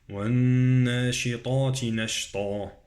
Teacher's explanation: النون غنة، نون مشددة، أقرأها بغنة، والطاء مفخمة